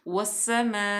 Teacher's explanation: ठीक है, उसके बाद अलिफ लाम जो लाम तारीफ़ जो है ये सीन आ गया हरूफ शमसिया में से, क्योंकि अलिफ लाम को हम छुपा रहे हैं यानी कि इसको साइलेंट कर रहे हैं, तो वाव को डायरेक्ट सीन में मुदगम करेंगे।